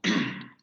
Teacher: La parte anterior o la parte frontal de la lengua sube a la zona de los postalveolos. Aquí es donde se tiene que generar la fricación, es decir, no se van a tocar los órganos, sino simplemente van a impedir que el aire salga de manera homogénea, sino que van a producir esa turbulencia y va a haber vibración en las cuerdas vocales.